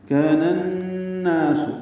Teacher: كان الناس، نون کو نون سے ملانا ہے، ادغام شمسی مع الغنہ ہے، نا الف مدہ ہے، کا بھی الف مدہ ہے، دو حرکات لمبا کریں گے